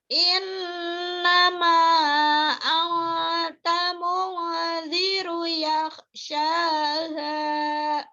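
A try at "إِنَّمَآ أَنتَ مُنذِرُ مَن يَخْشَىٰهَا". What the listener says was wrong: Mannya kurang, ketinggalan.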